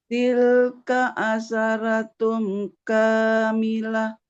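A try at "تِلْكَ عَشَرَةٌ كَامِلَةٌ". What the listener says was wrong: Oke, di sini ada huruf shin, asya, ro. Huruf ro-nya jangan dibaca ra. Tilka asyaro. Tilka asyarotun kamilah.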